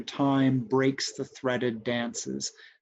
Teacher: the stress on breaks is so emphatic that time ends up not really being stressed by comparison. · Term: stress is relative